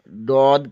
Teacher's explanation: زبان کی بائیں کروٹ بائیں دانتوں کے مسوڑوں سے لگے تو ڈاد ادا ہوتا ہے